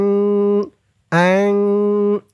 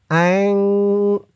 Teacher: আং ইকফা গুন্নাটা নাকের ভিতরে লুকিয়ে করতে হয়